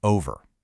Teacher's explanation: You can hear that the V sound is kind of soft. It's unstressed. So, we can just take it out. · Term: elision